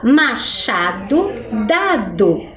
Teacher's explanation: a sílaba onde está a pronúncia mais forte é o chá no machado e o dá no dado, né? A sílaba dá no início da palavra e a sílaba chá no meio da palavra, ok?